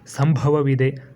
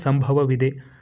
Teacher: ಸಂಭವ ಅಂದ್ರೆ ಪ್ರಮುಖವಾಗಿ ಇಲ್ಲಿ ಮಹಾಪ್ರಾಣ ಭ ಬರ್ತಕ್ಕಂತದ್ದು